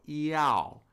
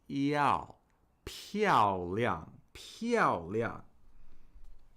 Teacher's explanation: All triphthongs in Mandarin Chinese have an ah sound in the middle. And that's what's stressed. So iao. We're not saying iao or iao.